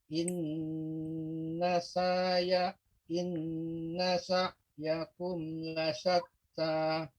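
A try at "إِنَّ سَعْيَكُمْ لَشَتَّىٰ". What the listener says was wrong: Kemudian, Pak, huruf ain ya pengucapannya tidak inna sa, bukan sa. Kalau sa seperti hamzah, tapi ain. Inna sa'yakum ya. Dia adanya lembut.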